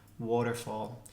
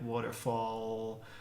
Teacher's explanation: first thing is what's called a velar l